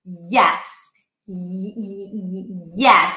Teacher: Yes, you feel the tongue pushing against the upper palate. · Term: y sound